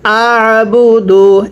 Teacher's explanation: এরপরে হামজা আইন জবর আ, বা পেশ বু। আইনটা উচ্চারণের সময় গলার মধ্যে অবশ্যই চাপ দিয়ে পড়তে হবে, অন্যথায় আইনটা হামজা উচ্চারণ হয়ে যাবে। পড়ুন হামজা আইন জবর আ, বা পেশ বু, দাল পেশ দু, আ বু দু।